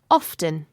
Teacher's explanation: some people say often like this. Often. You can hear the t sound. Often. Other people pronounce it with a silent t.